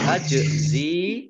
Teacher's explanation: jimnya huruf kolkolah dibaca memantul